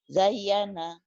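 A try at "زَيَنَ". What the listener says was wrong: Bukan Zayana. Zayana nggak ada tasdid. Zayana. Datar ya. Zayana.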